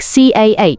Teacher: one of the key elements is non- rotic where the r sound sort of drops off at the end of words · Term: non-rhoticity